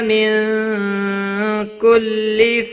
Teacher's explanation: نون ساکن کے بعد حروف اخفا کا کیف آیا ہے، اخفا حقیقی ہوگا، گنہ کے ساتھ پڑھیں گے